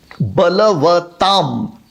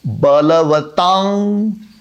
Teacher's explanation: बलवताम म आधा, इस तरह से भी उच्चारण सही है और बलवतांग इस तरह से उच्चारण करें तो वो भी सही है। ये जो अनुस्वार का उच्चारण है ना, ये अनुस्वार के बाद कौन सा अक्षर आता है उस पर आधारित होता है, डिपेंडेंट होता है।